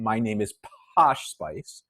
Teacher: the thing that distinguishes BA from pas right just very quickly for pas our lips open and then our vocal cords start vibrating for BA our vocal cords start vibrating just before our lips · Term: voice onset time